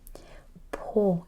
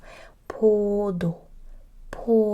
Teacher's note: It's again this P with more air and closed mouth O